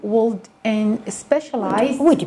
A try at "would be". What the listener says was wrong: Would be. There's no L here. Would be.